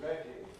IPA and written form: ˈredi (ready)